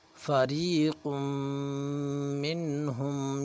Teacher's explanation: غنہ ناک میں آواز کو چھپانے کا نام ہے، ناک میں آواز کو چھپانے کا نام غنہ ہے. اس غنے کی آواز کو ہم ناک میں کم از کم ایک الف کے برابر چھپائیں گے